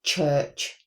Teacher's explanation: The voiceless alvola africate is ch that is a t and a shh put together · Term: voiceless alveolar affricate